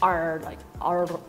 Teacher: You actually say the R. In Scotland, we roll our R's a lot